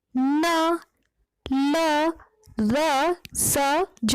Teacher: वत्सर्य, मसूड़े या जीभ की नोक की सहायता से उत्पन्न ध्वनियां · जब हम इन वर्णों का उच्चारण करते हैं न, तो जब हम न वर्ण का उच्चारण करते हैं तो ध्यान दीजिए अपनी आपकी जीवा आपके मसूड़े को स्पर्श करेगी